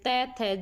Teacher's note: जीभ कहाँ टच हो रही है, दांतों पे टच हो रही है। अगर दांतों पे टच हो रही है ना, तो जब भी जीभ दांतों पे टच होती है वो कौन से व्यंजन होते हैं, दंत्य व्यंजन होते हैं।